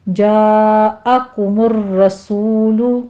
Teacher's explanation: جاء میں مد متصل واجب ہے، 5 کاؤنٹ کر لینا ہے، کاف کے پر ضمہ ہے، ہونٹ گول کر لیجئے